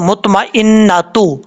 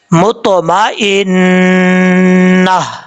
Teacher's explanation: اور جب یہاں پہ وقف کریں گے, تجوید کا قانون یہ ہے کہ جس لفظ پہ آپ وقف کر رہے ہیں اس لفظ کے آخر میں اگر گول تا ہو تو وقف کرتے ہوئے گول تا کو ہا سے بدل دیں گے. یعنی اگر آپ ملا کے پڑھ رہے ہیں تو مطمئنۃ تا پڑھا جائے گا, اور اگر یہاں ملا کے نہیں پڑھ رہے, وقف کر رہے ہیں, تو پھر اس صورت میں تا کو ہا سے بدل دیں گے